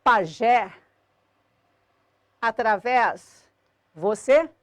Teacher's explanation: eu tenho aqui nesse grupo palavrinhas cuja sílaba tônica é a última e terminadas em e es, obrigatoriamente acentuadas.